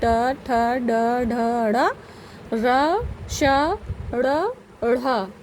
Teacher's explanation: ये सब वर्ण जो है ये मूर्धा से उच्चारित होते हैं